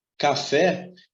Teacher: na palavra café, observe que a sílaba mais forte é o fé. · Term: oxítona